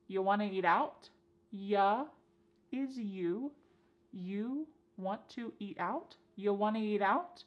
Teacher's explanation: And then we have reduced want to to become wanna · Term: reduction